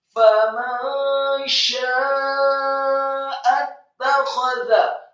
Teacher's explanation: Sya-nya dibaca talqin tebal dengan posisi mulut terbuka, fathah dan dengan mat yang sempurna 4 sampai 6 harokat karena ada harokat bendera. · huruf nun yang sukun bertemu dengan huruf sya, maka hukum bacaannya adalah ikhfa samar-samar.